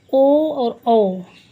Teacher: कंठस्थ का मतलब कंठ और ओठ दोनों जिसका उच्चारण स्थान होता है, जैसे ओ और औ, इसमें कंठ का भी होता है और ओष्ठ का, इसलिए इसको कंठस्थ बोलते हैं।